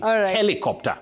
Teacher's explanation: Helicopter. The stress is at the beginning. Helicopter, not helicopter, which we hear locally.